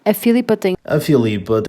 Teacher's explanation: dizem Filipa, enquanto que no resto do país temos mais tendência a dizer Filipa, cortando o I átono.